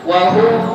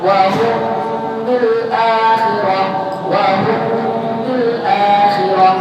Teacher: cara bacanya mim mati ketemu ba jangan nempel 100%. Harus ada celah, harus ada furja. Walaupun celahnya setipis kertas. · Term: ikhfa syafawi